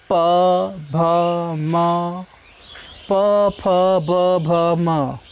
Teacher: आपके दोनों होंठ आपस में बार बार चिपक रहे हैं, दूर हो रहे हैं, तो ये बाइलेबियल साउंड्स हैं।